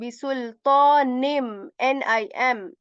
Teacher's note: We are saying bisultanim, nim. So we are going to replace the n sound of n with M.